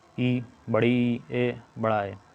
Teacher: इसमें जीभ का अगला भाग ऊपर उठता है · जैसे अग्रस्वर दोस्तों होता है जिसमें जीभ का अगला भाग ऊपर उठता है, उसे अग्रस्वर कहते हैं।